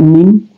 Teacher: dia keluar di dua bibir kita, mim, kemudian dia juga keluar di hidung, jadi dia adalah huruf asyafatain.